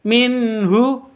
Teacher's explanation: nun mati bertemu dengan ha cara bacanya jelas karena izhar halq